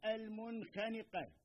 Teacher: نعم وصلنا إلى حرف الخاء، مثلا كلمة المنخنقة واضح، فالنون الساكنة في كلمة المنخنقة حكمها الإظهار السبب لمجيء حرف الخاء بعدها